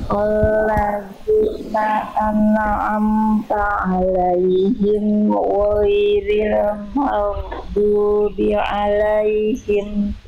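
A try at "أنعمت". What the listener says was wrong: Oke, nun sukun Bunda, tinggal nun sukun, jangan terputus. Jangan memantul. Enggak ya, nun sukun nggak punya sifat kolkolah. Maka nun sukun dilafalkan, jangan memantul. Siratal ladzina an'amta 'alaihim.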